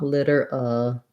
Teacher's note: Literally has a flap T, so it sounds the same as if we have a D in the middle of the word. So litter. This letter I is an I sound.